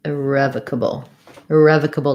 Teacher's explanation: this o turns into a schwa sounds like an uh